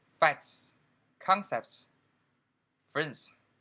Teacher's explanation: when they adding s they generally omit the middle t or d